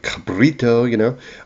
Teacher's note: there's a rolled R in there like cabrito